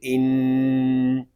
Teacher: نون میں شدد ہے، اس کو غننے کے ساتھ پڑھیں گے